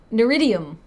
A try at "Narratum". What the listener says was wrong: It's not Neridium because the I is on the other side of the D. It would be Neridium. So it's Narratum. Narratum.